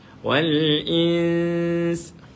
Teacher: nun mati selepas dia ada satu huruf lagi dan huruf adalah huruf ikhfa hakiki. Maka dia akan dibaca dengan dengung walaupun waqaf.